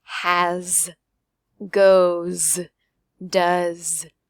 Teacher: Listen to that S at the end. It's going to sound like a Z.